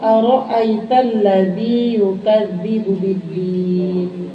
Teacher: Ra-nya tafkhim, artinya tafkhim itu dibacanya tebal. Jangan aro'ait, aro, berarti yang kedua, aro, bukan aro, harus tafkhim, tebal.